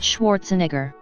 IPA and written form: ˈʃvɑːrtsnɛɡər (Schwarzenegger)